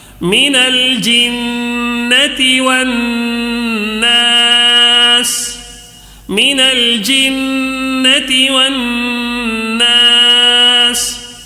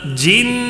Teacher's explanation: نون مشدد ہے یہاں پہ پھر، ٹھیک ہے، غنہ کرنا ہے